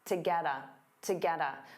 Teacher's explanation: To get a little, to get a, to get a. So to becomes that unstressed ta. Get a combines together